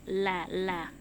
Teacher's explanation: Lam keluar dari ujung lidah bertemu dengan pangkal gigi seri bagian depan sampai ke samping